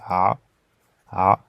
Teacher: qui se prononce ah comme dans le prénom Omar Omar donc c'est un son qui vient vraiment du fond de la gorge au niveau de la pomme d'Adam